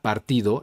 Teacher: partido la vocal a es una sílaba cerrada es decir decir el sonido de la vocal a es cortada por otra consonante que en este caso es la r haciendo de la a un sonido más corto